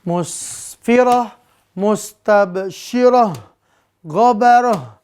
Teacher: Mustabsyiratun, kalau diwakafkan maka mustabsyirah. Kita ganti semuanya dengan ha di ujung-ujungnya ya. Maka ini diganti dengan ha.